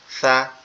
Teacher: সা এটা মূলত আমাদের দাঁত, এই যে জিহ্বার আগা পর্যন্ত লাগবে দাঁতটা, এই জিহ্বার আগাটা সামনের উপরের দুই দাঁতের আগার সঙ্গে লাগবে, লেগে নরম সুরে আওয়াজ উচ্চারিত হবে সা, এরকম ভাবে।